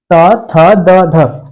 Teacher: जब आप त थ धग बोलते हैं तो जो आपकी जीभ है वह आपके दांतों को स्पष्ट करती है स्पर्श करती है जिससे क्या यात होता है कि यह एक स्पर्शी व्यंजन है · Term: त वर्ग